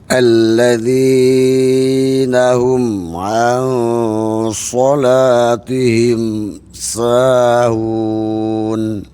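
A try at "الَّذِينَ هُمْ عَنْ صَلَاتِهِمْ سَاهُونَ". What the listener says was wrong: Baik, zinya Pak Haji kepanjangan. Coba alladzina hum.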